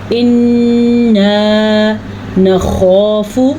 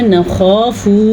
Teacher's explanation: خو کو موٹا کر کے پڑھنا ہے اور اس کے ساتھ الف مدہ بھی ادا کرنا ہے اور فا کو لمبا نہیں کرنا۔ بعض لوگ یہاں پہ غلطی کرتے ہیں نخاف، یہ غلط ہے، نخاف صرف فو اتنا۔